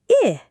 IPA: ɪ